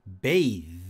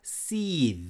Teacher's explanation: 유성음 TH 역시 혀를 깨문 상태에서 바람이 옆으로 빠지면서 성대가 울리는 겁니다